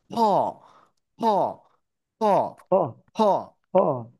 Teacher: ফ ট ড ভ মূর্ধন্য ন মূর্ধন্য মূর্ধন্যন ত বর্ণটি মহাপ্রাণ এবং মহাপ্রাণটি উচ্চারিত হবে আমাদের মুখ থেকে বাতাসটি নির্গত হবে